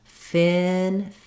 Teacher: The tongue is really lifted here in the back and there's just a little space in the front.